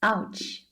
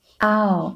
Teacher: you can think about the English word ouch right ow this part is a fourth tone